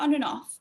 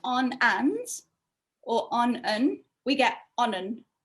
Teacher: together so instead of on and or on we get onon we also get linking between and off because and ends in a consonant and off begins with a vowel so they link together